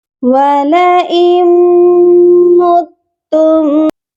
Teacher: یہاں پر بھی دیکھیے حمزہ کے بعد نون ساکن ہے، یہ نون ساکن بھی نہیں پڑھا جائے گا۔ ہم حمزہ کو میم مشدد کے ساتھ ڈائریکٹ ملائیں گے اور غنہ بھی کریں گے